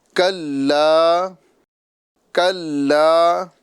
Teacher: زبان کی جڑ اور سخت تالو سے۔ کلا، کلا، لام کو ایک الف کے برابر کھینچیں گے · کلا، کلا، یہاں پر آپ دیکھ رہے ہیں چھوٹی کاف، اور چھوٹی کاف کی آواز ہمیں زبان کی جڑ اور اوپر کے سخت تالو سے ادا کرنا ہے۔ زبان کی جڑ اور سخت تالو سے۔